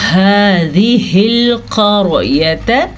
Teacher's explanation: قاف کو پر پڑھیں گے اور را کو بھی پر پڑھیں گے. جب را کے اوپر زبر یا پیش آتی ہے عموماً ہم را کو تب پر پڑھتے ہیں لیکن اگر را ساکن ہو جائے تو پچھلے حرف کی زبر یا پیش اس کو پر بنا دیتی ہے.